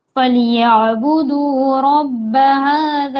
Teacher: عین کا مخرج حلق کے درمیانی حصے سے ادا ہوگا